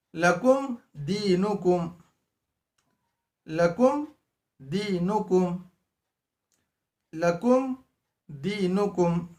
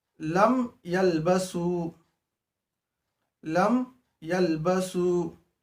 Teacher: मीम को जाहिर करके पढ़ेंगे, नाक में आवाज को नहीं छुपाया जाएगा। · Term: इजहार शफवी